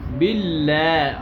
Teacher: اللام کو باریک پڑھیں گے